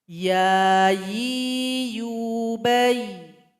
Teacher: huruf ya tempat keluarnya itu dari tengah lidah menempel ke langit-langit mulut kita kemudian sifat dari huruf ia ini adalah road aliran suara kita